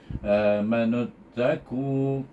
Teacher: Er macam man juga a manu nu tak boleh dibaca nu kerana dia bertemu dengan huruf hamzah wasal. Hamzah wasal ni menghendaki kita membaca nun kepada huruf ta.